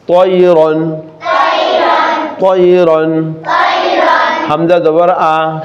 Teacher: এই তানবিনের পরে আসলে এটা এজহার মানে স্পষ্ট করে পড়তে হয়, গুণনা হয় না